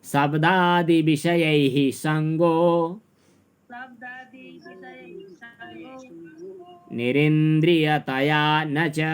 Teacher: हुन त नि रि इन्द्रि यी तिनटै ह्रस्व छन्, तर हामीले रिलाई दीर्घ उच्चारण गरिदियौँ किनभने पछाडिको अक्षर चाहिँ संयुक्त अक्षर छ